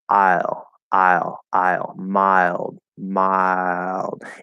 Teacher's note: you can do an L-colored I, okay, because the vowel sound in mild is the diphthong I. And you can L-color that, okay? · We're starting to pull into the L as we're going into the I ending point for the diphthong. So it's like mile.